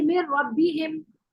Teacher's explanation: जैसे मेर रब्बिहिम, मेर रब्बी गुन्ना नहीं, गुन्ना भी नहीं करेंगे, क्योंकि सिफत भी नहीं पढ़नी ना उसकी। नून साकिन की ना सिफत लेनी है ना हमने मखरज लेना है, नून को बिल्कुल गायब भी कर देना